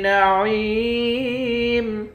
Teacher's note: عین کو یا کے ساتھ ملا کر یا کو ایک الف کی مقدار کھینچیں گے، آخر میں میم ساکن ہے۔